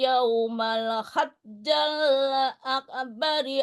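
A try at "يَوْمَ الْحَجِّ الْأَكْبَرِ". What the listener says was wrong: Itu yaumal haji apa ya hajja? Tadi baca hajja. Ilan nasi yaumal hajjil akbari ya.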